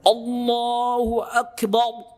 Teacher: dia ingin menebalkan ro tafkhim tapi getarannya hilang, jadinya lam tebal